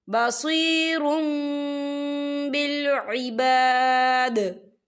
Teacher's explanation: यहाँ देखिए बसीरुम, रा के पर तनवीन है, और तनवीन के बाद जो है बा आ रहा है, तो यहाँ पर इकलाब होगा, यानी तब्दीली होगी। हम रा को जो है मीम के साथ मिलाकर पढ़ेंगे, और यहाँ पर गुन्ना भी होगा।